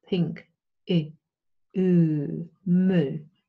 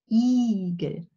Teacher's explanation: The tongue is not as close to the palate and the alveolar ridge for mö and pink as it is for eagle.